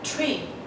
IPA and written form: triː (tree)